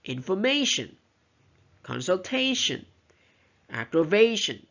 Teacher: So stress is on the third syllable of these words.